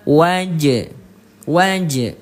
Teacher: Yang satu tidak dipantulkan sedangkan yang kedua qalqalahnya dipantulkan. Pokoknya cara baca pantul itu ada pantulan huruf e-nya nanti di belakang.